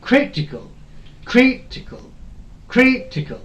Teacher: The third from end, the syllable which is third from end is cri.